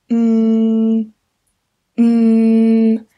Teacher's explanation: I just put my lips together and I just make a noise, and that noise comes out of my nose. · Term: nasal sound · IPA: /m/